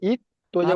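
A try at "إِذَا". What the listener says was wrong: ওটা ভাই ত নয় তো, ওটা জ আছে। হামজা জ,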